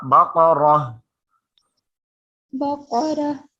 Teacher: When we have to stop here, you can see I already explained you this ta is a stop sign. When you have to stop it on baqaratan, so that time this ta will change into ha.